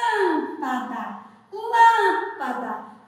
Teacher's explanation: Metade do som saiu nasalizado e outra metade saiu pela boca